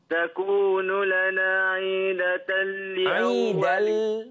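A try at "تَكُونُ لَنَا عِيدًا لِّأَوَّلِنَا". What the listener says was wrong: Tak ada datal. Aidal. Aidal. Tak ada datal. Aidal li awwalina. jangan tambah aidatal. Aidal. Ai dulu. Dal. Li awwalina.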